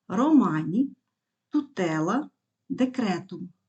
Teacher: коротким на голос запам'ятайте наголос ніколи не падає на останній склад наголос падає на другий склад від кінця слова якщо цей склад довгий